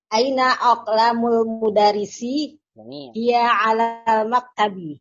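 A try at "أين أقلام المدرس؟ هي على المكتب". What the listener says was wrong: Masya Allah. Sahih Bu.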